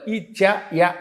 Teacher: ఇచు యశానాం తాలుహు, తాళవ్యంతో పలకాలి. ఈ చ యా, అందుకే తాలువులు పనిచేస్తూ ఉంటాయి.